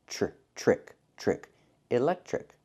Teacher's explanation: The TR makes the ch sound like in chicken, plus the R